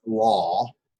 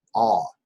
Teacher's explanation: Instead of having that long aw sound, like law, it'll just be a quick ah sound. Ah. It just shortens that vowel.